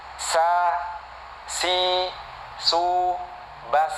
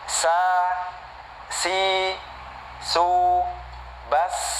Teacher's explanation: sama ada suara mendesisnya ya, ada sifat sofir di situ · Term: huruf sin